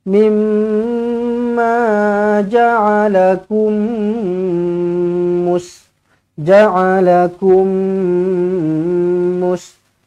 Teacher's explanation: Idgham mislain saghir, terus rapatkan bibir di sini, dengungkan dengan dua harakat.